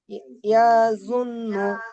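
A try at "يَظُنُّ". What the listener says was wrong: না, ইয়া টান হয়ে যাচ্ছে, ইয়া টান হবে না। ইয়াজুন্নু। হ্যাঁ, নুনটাকে গুণনা করেন। ইয়াজুন্নু।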